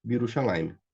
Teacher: Aqui, esse Shevá aqui, certo? Quando eu vou juntar com o B, fica o Hirik, e esse segundo Shevá ele some. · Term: Hirikyud